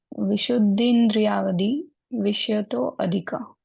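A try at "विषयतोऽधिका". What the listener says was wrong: हाँ, और ये जो विषय तो धिका है ना, इसको वैसे अलग से पढ़ते नहीं है जानबूझ के, एक साथ पढ़ रहे हो तो विषय तो धिका। है ना, एस मतलब खींचना है, विषय तो धिका, ऐसा।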